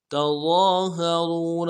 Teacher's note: ضا کو موٹا کریں گے، ضا کے اوپر کھڑا زبر ہے، ایک الف دال میں کھینچیں گے